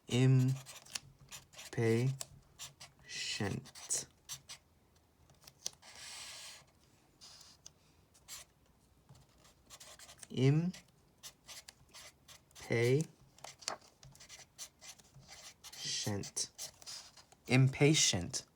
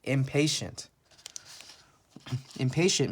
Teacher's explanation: I know there's a T here, but it makes the sh sound.